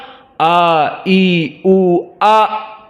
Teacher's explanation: makhraj hamzah a i u a, di mana in the deep of the throat, di kerongkongan yang paling dalam, aqsal halq.